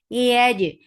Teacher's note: Yaj keep ya light and attach with jim. Jim is majhura, and there is qalqala.